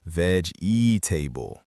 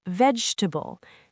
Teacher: That middle syllable just disappears.